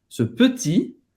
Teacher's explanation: Faz a boca do O e fala E, petit, acaba no I, não pronuncia o T no final. Ce petit. Então presta atenção, não é petit.